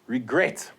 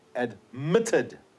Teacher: the stress the accent is on the final syllable